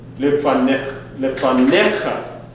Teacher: instead of the emphasis moving to the last syllable, the emphasis is moved to a middle syllable.